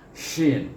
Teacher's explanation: Hurufnya ialah huruf shin juga, huruf shin, iaitu apabila menyebut huruf shin ini dia berhamburan angin keluar daripada shin. Cuba sebut shin, bila kita rapatkan kita punya langit kita tu, dia keluar anginnya shin. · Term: tafashi